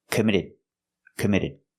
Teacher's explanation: the last D at the end of the word committed is a stop D